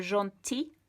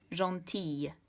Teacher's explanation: In the feminine, it's going to have a slightly softer ending. So instead of gentil, it's going to become gentille with a sort of y sound. And to achieve that, you have to double the L.